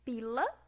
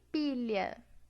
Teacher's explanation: Aqui eu tenho a lateral alveolar e aqui eu tenho a lateral palatal.